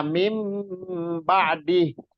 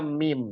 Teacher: Dia jadi suara nun itu nun sukun disuarakan menjadi mim, Pak. Jadi nun ketemu ba itu disuarakan jadi mim ba'di. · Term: iklab